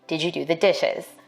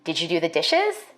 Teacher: African-American speakers may be more likely to ask a yes no question with a level tone or a falling tone. For white speakers, we expect a rising tone in questions like these.